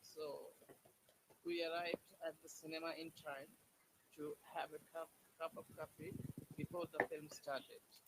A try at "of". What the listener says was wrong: Okay, remember, off is ob. Okay, the off sound is ob. Don't say off.